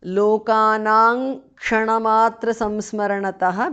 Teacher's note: Anuswara changes to ng there